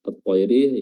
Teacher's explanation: lamnya di sini tidak terbaca dan langsung masuk ke huruf TH · Hukumnya adalah alif lam syamsiyah ya, atau idgham syamsiyah, di idgham langsung ke huruf ta. At-tayri, ya-nya di sini juga merupakan ya yang memiliki sifat lin yang didahului oleh fathah